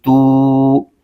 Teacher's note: تا پر پیش ہے اور آگے واو ساکن ہے، واو ساکن سے پہلے پیش آ جائے تو واو مدہ ہوتا ہے، اس کو ایک الف کھینچ کے پڑھنا ہوتا ہے